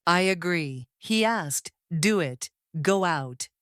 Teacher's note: Americans add a light Y or W sound to connect them. This creates a bridge between vowels, so the flow is never broken. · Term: vowel linking